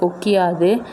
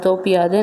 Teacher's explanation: இந்த இகரம் தனக்குரிய ஒரு மாத்திரை அளவிலிருந்து அரை மாத்திரை அளவாக குறைந்து ஒலிக்கும். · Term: குற்றியல் இகரம்